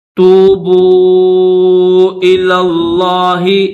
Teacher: توبو جو واو ہے، اس واو کے اوپر بھی چھوٹی مد ہے، تو اس کو کھینچیں گے